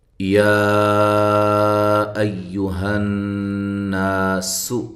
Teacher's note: ایو کا جو حمزہ ہے اس کو تحقیق کے ساتھ پڑھنا ہے، اور ہا کو واضح نکالنا ہے